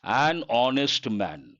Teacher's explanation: not correct H is silent we have to say honest and because H is silent h is mute we have to say an honest man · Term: silent or mute H